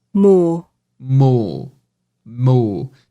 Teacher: no sotaque britânico esse R não tem